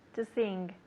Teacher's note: you hear how she's saying the N and the G together too? Sing. It's a nasal sound, okay? I'm going to have say it just one more time for you.